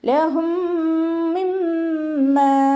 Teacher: മീം സാക്കിനയുടെ നിയമത്തിലുള്ള ഇദ്ഗാം സുക്കൂനായ മീമിനെ അടുത്ത മീമിലേക്ക് ലയിപ്പിച്ച് ഒന്നയോട് കൂടി ഓതി കൊടുക്കുക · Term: ഇദ്ഗാം ഷഫവി